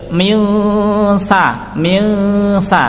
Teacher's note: Ciri-ciri mudahnya dibunyikan dengan bunyi eng, maka bacaan ikhfa haqiqi. Kenapa? Ada nun sukun bertemu sa.